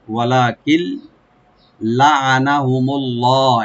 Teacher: ওয়া আকওয়ামা ওয়ালাকিন লাআনাহুমুল্লাহ, ওয়ালা, ওয়া ওপেন থাকবে, লাম একালে টানবেন আর নুন সাকিনের পরে যেহেতু লাম আসছে এখানে আমরা ইদগাম করব উইদাউট গুন্না